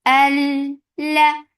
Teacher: Lam will get sifa of tawassut. And tawassut is medium flow of sound. Al la. With fatha, the sound is short.